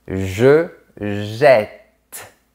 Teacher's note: Ici, on comprend bien que la double consonne change la prononciation. Ça ouvre le son du E.